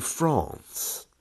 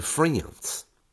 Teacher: in received pronunciation and in the south of the uk the letter a is often pronounced as an ah it's almost like an o for example i'm going to france